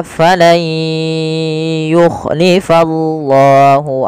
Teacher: diganti suara nunnya menjadi suara ya kemudian Langkah kedua ditahan dengan gunah